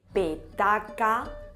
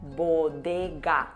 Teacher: el punto de articulación de la P es el mismo que el de la B, solo que una es sorda y la otra es sonora.